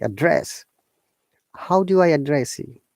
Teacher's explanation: One is noun, another one is verb. When it's verb, it becomes upper intonation, and we stress on the first syllable, like address.